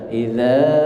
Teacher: Idza panjangnya 4 ketukan atau 2 ayunan. Idza 2 ayunan.